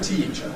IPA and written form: ˈtiːʧə (teacher)